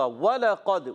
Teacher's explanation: وَلَقَدْ، واو کی ادائیگی ہوگی ہونٹوں کی گولائی سے، واو پر زبر ہے، لام پر زبر ہے، قاف پر زبر ہے، حرکات کو بغیر کھینچے، بغیر جھٹکا دیے معروف پڑھتے ہیں۔ قاف موٹا ادا کریں گے کیونکہ قاف موٹے حروف میں سے، حروف مستعلیہ میں سے ہے۔ اچھا، قد آپ دیکھیں دال ساکن ہے، جب وَلَقَدْ پڑھیں گے تو قلقلہ ہوگا.